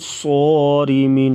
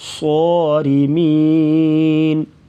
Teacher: ان کنتم صارمین، صاد کو پر پڑھیں گے، را کے نیچے زیر ہے تو را کو باریک پڑھا جائے گا